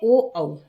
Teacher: तो ये क्या है कंठोष्ठयो कंठ और ओष्ठ से है ना ओ औयोह वर्णयो उच्चारणम अभय उभयोह कंठ ओष्ठयो ओष्ठ · ओ औ अनयोः वर्णयोः उच्चारणम उभयोः कंठ ओष्ठ स्थानयोः भवति